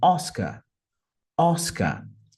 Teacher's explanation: percebam que não tem nem o R, é mais um Oscar